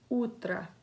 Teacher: the O at the end of the word is pronounced as an A because of vowel reduction. The stress is on the U.